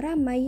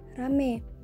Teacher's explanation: pada kata ramai dengan diftong ai diucapkan menjadi kata rame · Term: Monoftongisasi